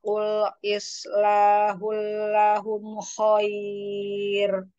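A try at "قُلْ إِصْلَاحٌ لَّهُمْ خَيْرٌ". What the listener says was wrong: Sopnya diperbaiki di sini ish. Qul islahul lahum.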